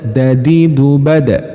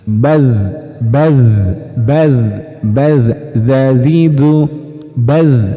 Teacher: Huruf dal kedua-duanya tertahan, nafas maupun suara tertahan. Sedangkan huruf dzal suaranya mengalir.